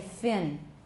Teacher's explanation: we've got lip action in the first word because it's labiodental, f.